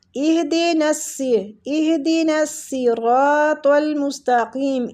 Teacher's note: ہا جو ہے وہ سینے والی سائڈ سے نکلے گا